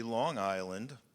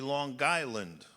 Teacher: If you go with the idea that people in a certain region should have the ability to pronounce things the way they want, it wouldn't be Long Island, it would be Long Island with a very pronounced glottal stop